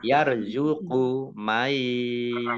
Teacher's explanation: Nun sukun bertemu dengan huruf ya dan idgham bi gunnah masuk dengan mendengung yaitu mendengung ya ditandai yaknya di ada tasdidnya.